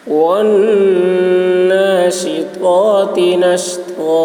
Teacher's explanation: شین کی آواز سیٹی جیسی ہوگی، تو کی آواز موٹی ہوگی، اور تا کی آواز باریک ہوگی. نش تو یہ شین کی آواز سیٹی جیسی ہوگی، اور تو کی آواز موٹی ہوگی